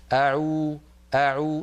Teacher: ما يقول الواحد منا أعو ويضم شفتيه جدا هكذا حتى يأتي بالضمة كاملة